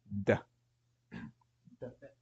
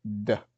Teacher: It's your D, where you're kind of touching the tip of your tongue to the gums behind your central incisors on the upper. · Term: dal